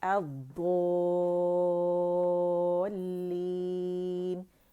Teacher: کیونکہ مد لازم کلمی مثقل ہے تو 6 کاؤنٹ لازمی کھینچنے ہیں، یہ دود کی آواز کو ہم نے 6 کاؤنٹ لازمی کھینچنے ہیں۔